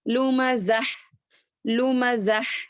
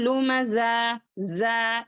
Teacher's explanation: अब हा की आवाज को जो है क्या करना है, बाहर जारी करना है। यहाँ पर जा की तरह नहीं पढ़ना।